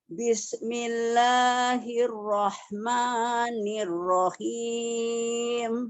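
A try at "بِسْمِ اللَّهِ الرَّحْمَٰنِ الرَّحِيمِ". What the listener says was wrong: Agak kepanjangan. Coba begini Bu Haji. Bismillahirrahmanirrahim.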